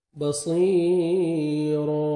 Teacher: 1 second کھینچیں گے، یا مدہ، اور را کو مزبر ہے، الف مدہ 1 سیکنڈ آپ نے را کو کھینچنا بھی ہے اور را کو موٹا کر کے پڑھنا ہے